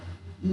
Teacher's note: जब ल का उच्चारण किया जाता है तो स्थान विशेष पर वायु का प्रवाह अवरुद्ध होता है और वायु जिह्वा के एक ओर से या दोनों ओर से बाहर आती है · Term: पार्श्विक वर्ण